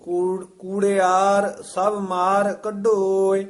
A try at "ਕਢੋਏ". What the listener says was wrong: ਹਾਂਜੀ, ਕੂੜਿਆਰ ਸਭ ਮਾਰ ਕੱਢੋਏ, ਇਹ ਥੋੜਾ ਜਿਹਾ ਕਸ ਕੇ ਖਿੱਚ ਕੇ ਉਚਾਰਨ ਕਰਨਾ, ਕਢੋਏ ਨਹੀਂ ਕਹਿਣਾ।